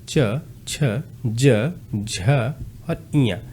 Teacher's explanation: तालव्य व्यंजन कौन-कौन से हैं? जो तालु की सहायता से तालु के स्पर्श से बोले जाते हैं।